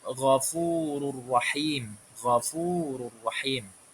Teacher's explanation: Di sini ada juga tanwin bertemu dengan huruf ra, ghafurur rahim, ghafurur rahim. Jadi langsung dimasukkan tanpa dengung. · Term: idgham bila gunnah